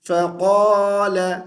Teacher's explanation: قاف کو پر موٹی آواز کے ساتھ پڑھیں گے